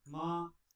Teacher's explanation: tone 1 has a high, steady pitch and sounds like this.